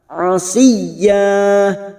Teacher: masuk pada huruf ya yang bertasdid dulu hanya masuk tanpa mendengung tanpa ditahan lama-lama